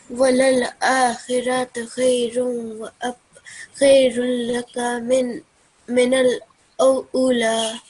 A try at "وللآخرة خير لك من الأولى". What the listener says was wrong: Ula. Okay. Prolong that. So Ula.